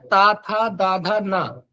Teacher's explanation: देखेंगे जीभ जो है बार बार दांतों में हिट कर रही है